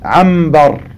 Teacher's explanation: Donc les Arabes ne prononçaient pas anbar, l'ombre, anbar. Ils prononçaient ambar, car la lettre mim et la lettre ba ont un point de sortie qui est très proche.